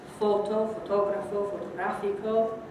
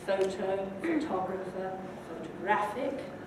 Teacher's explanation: Spanish, you notice, maintains the vowel quality in unstressed syllables, while English reduces the vowel, usually to schwa.